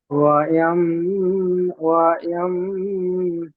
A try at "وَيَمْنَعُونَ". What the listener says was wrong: ওয়াম বলে গুণনা করছেন, গুণনা হবে না, ওয়াম নাউ।